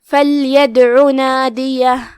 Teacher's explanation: پھر یہاں دال پہ جزم ہے تو یہاں حکم القلقلہ ہوا تو ہم دال کو ہلاتے ہوئے یہ کلمہ پڑھیں گے. آخری میں عین ہے اور اس پہ پیش ہے تو ہم اپنی آواز لمبی نہیں کریں گے تاکہ مد واو نہ ظاہر ہو